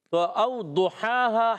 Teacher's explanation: تو او ضحاہا، ہا پر کھڑا زبر، ہا ادا ہوتا ہے حلق کے درمیان والے حصے سے، ہا اور ہا دونوں کو ایک ایک الف کھینچنا ہے